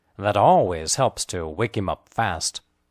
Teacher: The emphasized words are always and helps.